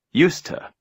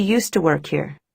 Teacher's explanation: in the expression used to, the two words are reduced, and we pronounce them together as a single word. Used to.